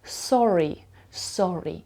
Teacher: так як ви вимовляєте українське р так само ви вимовляєте американське р але без вібрації